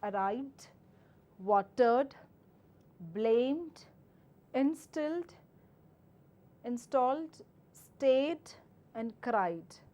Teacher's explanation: these set of words take your dh sound because these words are ending with a vibrating sound or a voiced consonant sound